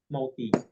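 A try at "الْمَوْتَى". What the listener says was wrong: mauta, nggak boleh mauti. Nah, kemudian kan kalau ya begini nggak ada titiknya memang bacanya harus fathah di belakang kan. Kalau mauti mesti ianya ada titik.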